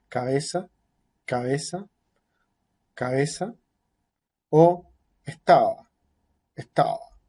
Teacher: Lo más probable es que digamos algo así como una consonante bilabial, pero no con una forma, no con un contacto que llegue a ser marcado entre los labios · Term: aproximante